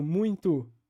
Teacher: essa ideia do o no final com alçamento ou seja essa essa transformação do o em U